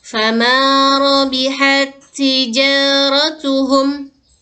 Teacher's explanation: ta yang pertama itu hilang desisannya karena masuk ke huruf ta yang kedua yang berharokat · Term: idgham mutamatsilain